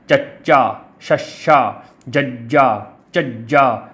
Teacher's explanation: ਉਹ ਧੁਨੀਆਂ ਜਿਨ੍ਹਾਂ ਨੂੰ ਉਚਾਰਨ ਲੱਗਿਆਂ ਜੀਭ ਸਾਡੇ ਤਾਲੂ ਨੂੰ ਛੂੰਹਦੀ ਹੈ ਜਾਂ ਟੱਚ ਕਰਦੀ ਆ ਤਾਂ ਉਹਨਾਂ ਨੂੰ ਤਾਲਵੀ ਧੁਨੀਆਂ ਕਿਹਾ ਜਾਂਦਾ।